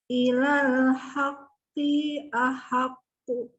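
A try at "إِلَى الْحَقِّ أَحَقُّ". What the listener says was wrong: Di pertama. Ahaq itu al-haqqi. Qi, qafnya itu satu harokat. Terus yang kedua ahaqqo. Itu mantul ya. Jangan dibaca ahaqqu.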